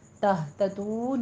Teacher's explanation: ہا پڑھنا ہے اقصے حلق سے، سینے کی جانب سے موٹی آواز نکلے گی